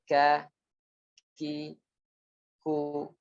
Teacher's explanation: kaf ini disertai dengan hembusan nafas yang terhembus setelah pengucapannya. Jadi setelah menempel dua organ itu, yaitu pangkal lidah dengan langit-langit atas, kemudian ketika terbuka disertai dengan hembusan nafas sedikit. · Adapun kaf langit-langit lunak dan keras, yaitu sedikit bagian dari langit-langit lunak dan juga tambah langit-langit keras yang berwarna kuning di situ.